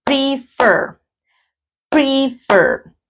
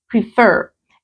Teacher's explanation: la entonación está en la última sílaba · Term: mayor fuerza de voz